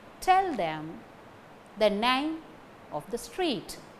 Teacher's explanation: Tell, name, street. Only these three words carry stress. These three words are the strong forms which carry stress.